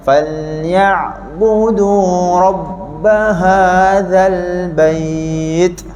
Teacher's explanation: Cantik, betul, dah akan lebih kemal masa kita sebut hadza, za tadi lidah kena keluar sekali ya.